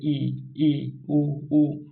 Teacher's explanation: संवृत स्वर यानी कि इस स्वर को बोलने में मुंह बहुत कम खुलता है। जैसे इ उ मुंह बहुत कम खुला।